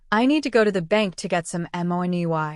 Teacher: The stressed words are need, go, bank, and money. The rest of the words are quick and soft. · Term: rhythm